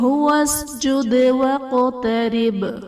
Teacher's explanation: وقترب میں قاف اور با حرف قلقلہ ساکن ہے، یہاں بھی قلقلہ خوب ظاہر کریں گے۔ · وسجد میں دال حرف قلقلہ ساکن ہے، یہاں بھی قلقلہ خوب ظاہر کریں گے۔